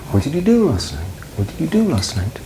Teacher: It goes up on do and then down. This is falling.